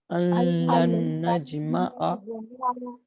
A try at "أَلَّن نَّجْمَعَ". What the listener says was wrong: نہیں، پہلے والے میں نون سائلنٹ رہے گا. أَلَّن نَجْمَعَ